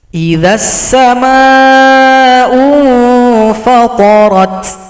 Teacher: Ta-nya juga ada bunyi hamas.